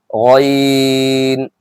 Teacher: غین آپ کو موٹا کر کے ہی پڑھنا ہے، آخری حلق سے ہی غین کو نکالنا ہے